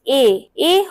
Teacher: তাহলে হলো সংবৃত এবং উচ্চ স্বরধ্বনি। এ হলো প্রসারিত এবং উচ্চ মধ্য